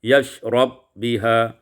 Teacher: Pada ayat ke-6, yashrabu biha idghamul ba fil ba, diidghamkan ba pada ba, yashrab biha.